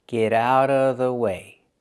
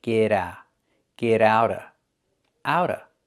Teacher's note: the T in get changes to a fast D because it's between vowels